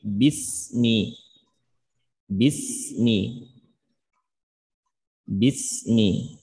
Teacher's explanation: sin sukun ini di antara sifatnya adalah ar-rikhwah atau rafawah. Maka cara membacanya ada dengan menjalankan suaranya, mengalirkan suara kita.